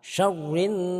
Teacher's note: Jadi di sini juga ada gunnah. Ada gunnah, maka kita harus baca tahan. Syarrin. Jadi di sini ada dua tempat yang kita harus membacanya dengan sama antara gunnah-gunnah ini.